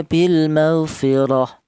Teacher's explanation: Kemudian di sini ada bil maghfirah. Nah, ini ada huruf ro yang berharokat fathah lagi. Ini dibaca tafkhim atau dibaca tebal.